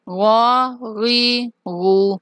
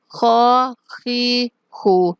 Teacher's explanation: غین اور خا ابتدائی حلق سے ادا ہوتے ہیں